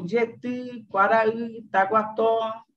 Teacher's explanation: Na língua guarani, como já sabemos, o acento recai predominantemente na última sílaba. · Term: padrão acentual